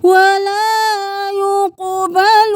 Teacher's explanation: قاف حروف قلقلہ میں سے ہے، آواز کو پلٹائیں